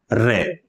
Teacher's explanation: र का जब हम उच्चारण करते हैं तो हमारी जिवा में कंपन होता है यानी आप खुद र बोलकर महसूस करेंगे तो जिवा में वाइब्रेशन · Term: प्र कंपित व्यंजन